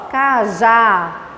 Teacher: Olha aqui o último, a última sílaba, eu puxo um pouquinho. Cajá. Ela é mais forte, cajá. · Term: oxítona